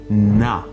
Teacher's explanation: i feel how my tongue touches my upper teeth